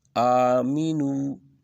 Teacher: آ کو تھوڑا سا کھینچیں گے